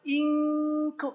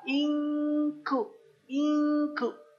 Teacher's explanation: kalau ada kata begini ini in kuntum bacanya bukan inktum nah kalau ketemu Kaf Ka dia memang lebih terdengar engnya tuh